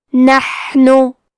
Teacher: حا کی ادائیگی حلق کے درمیان والے حصے سے ہے. کیونکہ یہاں حا ساکن ہے تو ہم یہ حرف کو ہمزے سے پڑھیں گے نحنو. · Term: حرف الحا